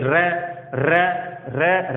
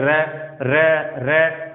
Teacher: लुंठित व्यंजन या प्रकंपित जिसमें कंपन उत्पन्न होता हो, जैसे र र र र में क्या हो रहा है, कंपन। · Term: प्रकंपित या लुंठित व्यंजन